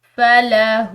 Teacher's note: ہا کے اوپر چونکہ یہاں الٹی پیش ہے اس کی وجہ سے ہم نے اس کو تھوڑا سا یعنی کہ ایک الف کی مقدار کھینچ کر ادا کرنا ہے